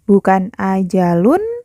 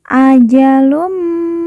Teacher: Kemudian lun bertemu dengan huruf mim yang bertasydid. Lun berharokat dhammah tanwin, kita leburkan, langsung masuk huruf mim.